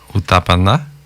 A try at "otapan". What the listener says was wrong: Oui, Otapan. Le A ne se prononce pas.